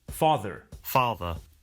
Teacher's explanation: father ends in a simple schwa vowel